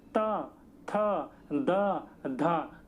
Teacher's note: आपकी जीभ जो होगी वो दांत पर टकराएगी, दांत पर बिना टकराए आप बोल नहीं सकते इनको, इसलिए इनको दंते कहा जाता है।